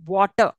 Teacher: I'm not saying R sound there